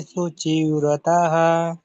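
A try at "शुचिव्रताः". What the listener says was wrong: ಮಾತಾಜಿ ಸರಿ ಚೆನ್ನಾಗಿ ಹೇಳಿದ್ದು ಪ್ರಭುಜಿ ಧನ್ಯವಾದ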